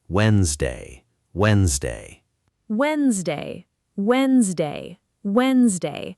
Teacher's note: The actual pronunciation is Wednesday. That first D is completely silent, gone, as if it was never written there at all.